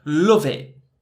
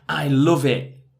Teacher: there's no T sound it's that glottal T and mixing those two words together